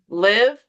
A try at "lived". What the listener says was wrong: D sound, right? Lived.